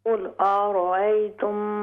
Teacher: قل أرأيتم صرف را ہیوی ہوگی